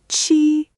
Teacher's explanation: It's like the ch in cheese, but again with that same wide smile and the tongue tip down low. There's a tiny puff of air with it.